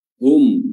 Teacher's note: ada hu yang dhammah ya, bibir dimonyongkan